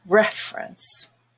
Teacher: the first e is no longer a schwa because it's stressed and it has the red vowel and everything else is a schwa reference so remember know your